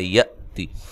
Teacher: حمزہ کو جھٹکے سے پڑھنا ہے، تا کو باریک پڑھنا ہے، لمبا نہیں کرنا ہے